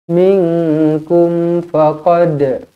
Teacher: Minkum faqad, qalqalah sughra dibaca melantun.